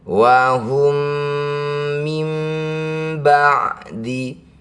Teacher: bunyi mim pertama masukkan mim kedua dengungkan dua harakat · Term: idgham mimi